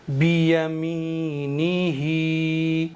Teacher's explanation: बियमीनी, हा खड़ी ज़ेर ही, बियमीनी ही। नून को थोड़ा सा भी नहीं खींचेंगे, हा को एक अलिफ के बराबर खींचेंगे।